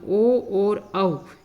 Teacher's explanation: ओ और औ, इनका उच्चारण स्थान किसको माना गया है, कंठोष्ठ को माना गया है